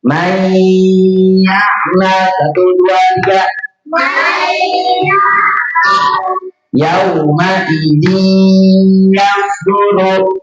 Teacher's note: Itu salah bacanya. Karena idgham biguna itu didengung, maka harus ditahan dulu 2 harokat.